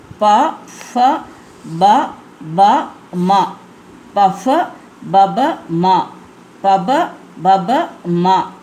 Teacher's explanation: உதடு வந்து நம்ம டச் பண்ணணும். 2 உதடு வந்து சேர்ந்து சொல்கிற மாதிரி வரணும்